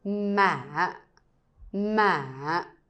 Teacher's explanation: I go very low at the ending part. When trying to say this one quickly, it sounds a little bit like a down tone. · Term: question tone